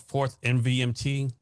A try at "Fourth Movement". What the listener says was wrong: It's actually pronounced Fourth Movement. It's a movement is abbreviated in that logo.